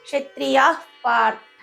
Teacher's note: తర్వాత రెండో విసర్గ క్షత్రియాః పార్థ అన్నారు. అహ్ అనే పలికేటప్పుడు ఫ్ అనే సౌండ్ బయటకు వస్తుంది మనకి. క్షత్రియాః పార్థ అని చదవాలి.